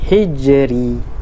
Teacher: Hijri, ra berada di hujung kalimah, jadi bacaan dia nipis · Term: bacaan nipis